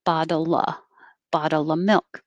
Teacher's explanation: bottle of milk will get shortened. We don't say the V